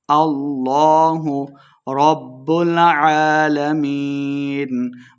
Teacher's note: لفظ اللہ کا لام موٹا پڑا جائے گا